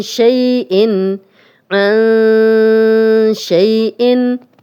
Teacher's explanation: نون ساکن، آگے شین آ گیا تو یہ اکفا کا رول ہے اور نون کی آواز کو چھپا کر غنہ کر رہے ہیں